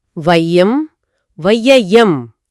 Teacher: என்னோட நாக்கு அடுத்த எழுத்தான யாவை உச்சரிக்க தயாராயிடுது. அதனால அந்த ஐ சத்தம் பாதியிலேயே துண்டிக்கப்படுற மாதிரி ஒருஃபீல் வருது.